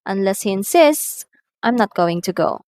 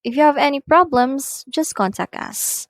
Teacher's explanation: the tone rises in the first clause meaning at the first statement, and then it falls gradually in the second clause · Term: rise fall intonation